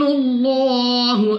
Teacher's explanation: لام آف اللہ سے پہلے حرف کے اوپر پیش تو اس لام آف اللہ کو پر یعنی موٹا پڑھیں گے